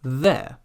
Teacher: the tongue is just a little bit out of the mouth, but still between the teeth, but not clamped quite so hard because you need that room for vibration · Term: voiced th